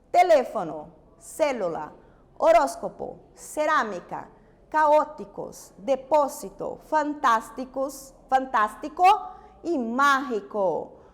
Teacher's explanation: Aquelas que llevan acento en la antepenúltima sílaba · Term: esdrújula